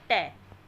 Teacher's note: ट क्या है? मूर्धन्य व्यंजन है, ये ओष्ठ नहीं है।